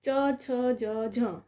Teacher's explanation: જો બોલશો ત્યારે જીભ અને તાલુ બંનેને શું કરે છે? સ્પર્શ કરે છે, એટલા માટે એને તાલવ્ય કહેવામાં આવે છે